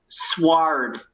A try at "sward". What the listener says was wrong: the W is silent. It's Sard.